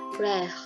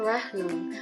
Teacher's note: Nah, R dalam bahasa Jerman itu tidak sejelas dalam bahasa Indonesia. Jadi R-nya itu dia yang mengambil dari pangkal tenggorokan.